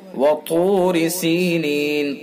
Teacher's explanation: وطور سینین، طا کو پر کر کے پڑھیں گے، پر یعنی موٹا منہ بھر کے۔ وطور سینین، طا حروف مستعلیہ میں سے ہے تو یہ اس لیے ہمیشہ ہر حال میں پر پڑھا جائے گا طا۔